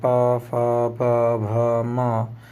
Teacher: ओष्ठ दोनों होठों से